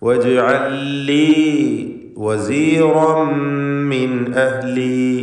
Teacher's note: സാക്കിനത്തായ ലാമും ശേഷം ഉള്ള ലാമും രണ്ടും ഇദ്ഗാം ചെയ്തുകൊണ്ട് വജ്അൽ ലി ഒറ്റ ലാമാക്കി ഉച്ചരിക്കുന്നു. വസീറൻ റായിന് തഫ്ഖീം കൊടുക്കണം.